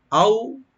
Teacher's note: আও এখানে হরফে লিন, কোনো টান হবে না, সফট কে পড়তে হবে